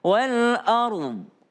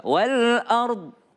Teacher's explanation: kalau berhenti wal ard itu dnya kedengaran ya